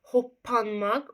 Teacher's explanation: Gördüz ikinci P B-ya çevrilir.